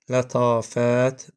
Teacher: burda lətafət a uzanır